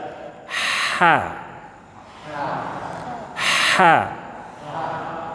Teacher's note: huruf H keluar dari tenggorokan bagian tengah-tengah atau Tengah tenggorokan pas jakun